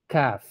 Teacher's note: Ada sedikit hamas, kena hamas keluar. Hamas tu maksudnya angin.